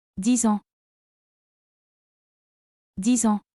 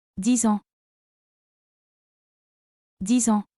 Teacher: the X is pronounced Z because it links with the vowel in ans called liaison. A nasal vowel, you don't pronounce that N fully, instead air comes out through the nose.